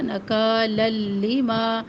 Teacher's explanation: تنوین کو ہم لام تشدید سے ملائیں گے. ادغام مع الغنہ، ادغام کر رہے ہیں تنوین کو تشدید سے ملا رہے ہیں، لیکن یہاں پہ مع الغنہ بلا غنہ کر رہے ہیں. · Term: ادغام بلا غنہ